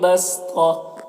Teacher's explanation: بس یہاں پر تو حروف مستعلیہ میں سے پر پڑھیں گے، اور صاد بھی حروف مستعلیہ میں سے ہے، اور یہاں پر جیم وقف جائز کی علامت ہے، وقف کریں گے تو یہ گول تا جو ہے یہ ہائے ساکنہ سے بدل جائے گی